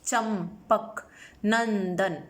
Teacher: ध्यान में रखिएगा कि अनुस्वार का जब प्रयोग करते हैं तो हवा, वायु नाक से बाहर निकलती है और इसका उच्चारण आधी म या आधी न के समान होता है